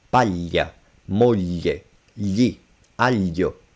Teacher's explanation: It's the o in bell, or yeah, bell. But then you squash the tongue flat against your palate, and you force the air to come out of the sides of your tongue.